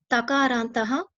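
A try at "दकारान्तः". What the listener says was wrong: Dakarantaha, not Takaranta. Dakaranta.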